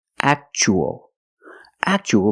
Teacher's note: we see Tua as a second syllable so the t is pronounced CH